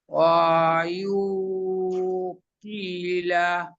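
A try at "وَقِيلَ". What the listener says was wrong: মাশাল্লাহ, আরেকটু টান দেন দেখি লাস্টেরটা। কিলা কিলা।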